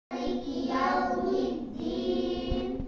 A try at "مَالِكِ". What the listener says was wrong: لا أقول مالك، مالك سلم، الصحيح مالكي، مالكي، مالك يوم الدين،